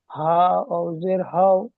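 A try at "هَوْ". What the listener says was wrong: জের নয় ভাই, উপরে আছে জাবার, জাবার আছে না, আপনি জের পড়ে যাচ্ছেন। হামজা ওয়াও জাবার আও, বা ওয়াও জাবার বাও।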